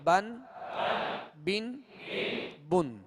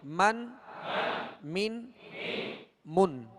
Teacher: اب مخارج کی لسٹ میں دیکھیں گے تو با کا جو مخرج ہے وہ دونوں ہونٹوں کے تر حصے سے، اور میم کا جو مخرج ہے وہ دونوں ہونٹوں کے خشک حصے سے ادا ہوتا ہے